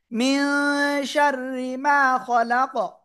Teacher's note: থেমে পড়লে কফ সাকিন, তখন কি হবে? কি হবে? কলকলা হবে।